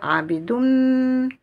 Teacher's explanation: on va assimiler le son on dans la lettre M